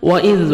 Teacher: واو کو لپس کو راؤنڈ میں لے کے جائیں گے اور زال کو نرمی سے ادا کریں گے